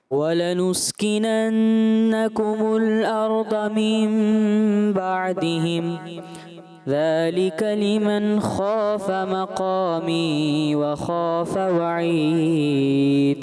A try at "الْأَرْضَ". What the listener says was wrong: آپ کو بس یہ ہے کہ ارض ضاد کی ادائیگی اور اچھا ہو.